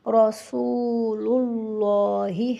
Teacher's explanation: رسول اللہ میں را کو پر پڑھیں گے اور واو مدہ بھی ہے اور اللہ تعالیٰ کے نام سے پہلے پیش ہے تو اس کو پر کر کے بھی پڑھیں گے، رسول اللہ میں سین پر پیش ہے، اس کے بعد واو ساکن ہے۔